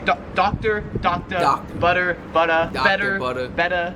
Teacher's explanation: The R is not really pronounced.